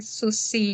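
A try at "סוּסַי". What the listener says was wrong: Não, tem um A, ó. Um A e mais o I. Sussai. Meus cavalos.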